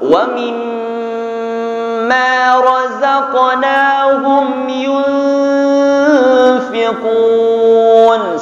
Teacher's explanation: Wa mim itu dengung. Wa mim itu tekan sampai 5.